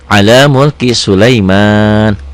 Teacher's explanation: Panjangnya cuma di sini dua ketukan aja, satu alif. Tapi karena berhenti, mulki Sulaiman jadi panjang, 2 sampai 6 harokat. Itulah yang dikatakan mad arid disukun.